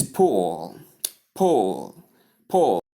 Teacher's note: Correct vowel is short u not long oo sound.